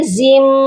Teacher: زا میم 2 زیر زم، یہاں پر بھی دیکھیے میم پھر مشدد ہے، میں نے زا کو میم کے ساتھ ملایا، ساتھ میں غنہ بھی کیا، اور میم 1 بار اس طرح پڑھا گیا